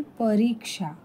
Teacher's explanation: शुद्ध शब्दामधला परीक्षा त्याच्यामध्ये जो हा रीक्षा हा जो आवाज आहे तो तुमचा दीर्घ येतो